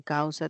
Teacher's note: en causa tengo una abierta y una cerrada y un diptongo